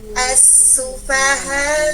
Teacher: H fathah ketemu dengan alif mad, mad tabi'i kalimi. Alifnya harfu mad dihukum bacaan tarqiq, dibunyikan tipis haknya. As-sufaha, jangan ho, jangan dibunyikan as-sufaha'u.